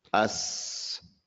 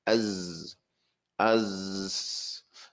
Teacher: the Sin has air and sound. The Zay has sound, no air in it. The Zay has no air.